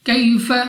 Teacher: یا ساکن پر زبر یا لین بغیر کھینچے بغیر جھٹکے دی پڑھیں گے یعنی جلدی سے۔